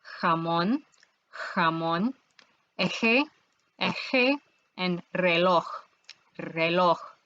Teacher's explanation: The sound the J makes does not exist in English. It's similar to an H, but a little harder.